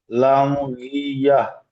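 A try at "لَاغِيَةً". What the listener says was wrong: লাম হবে না, লাগিয়া।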